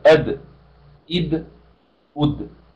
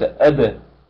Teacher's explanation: تفتحيها بل قولي هكذا أد إد أد وليس أدى إذا أدى لا تفتحي الدال بس أسكنيها وقلقليها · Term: قلقلة